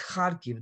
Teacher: the accent is on the first syllables